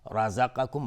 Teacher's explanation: را مفخم هست چون حکمش استعلاست، چون فتحه داره